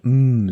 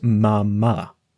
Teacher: the first thing you'll try to do is close the lips leading to an um sound together that forms Mama The Next Step once you get a